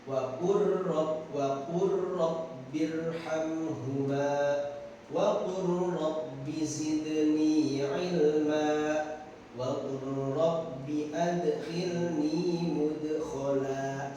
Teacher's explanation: jadi dimasukkan huruf lamnya ke huruf ro-nya kenapa karena tempat keluar hurufnya atau makhrajin hurufnya itu hampir sama ya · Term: lam sukun bertemu ro